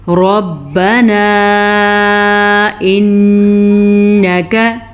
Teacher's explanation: रॉ को पुर पढ़ना है क्योंकि रॉ ज़बर की वजह से पुर पड़ी जाएगी, ठीक है। मद को अदा करना है, 2.5 सेकंड तक ये मद लंबी की जाती है। · मद को अदा करना है, 2.5 सेकंड तक ये मद लंबी की जाती है। नून का गुन्ना अदा करना है, नून पे शद है तो गुन्ना बनता है। काफ और नून, इनको किसी भी लफ्ज़ को सवाए इस मद के किसी भी लफ्ज़ को हम लंबा नहीं करेंगे क्योंकि यहाँ पे ज़बर हैं।